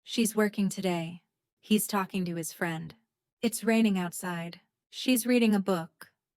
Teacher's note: Listen to how she is becomes she's, and he is becomes he's. Do not separate them. Let them flow as one sound.